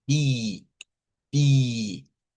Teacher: Y el sonido debe ser bi, bi, y es sílaba tónica, bi, lleva fuerza de voz